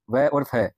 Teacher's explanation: दंतोष्ठीय निचले होठ से और ऊपर के दांतों से व और फ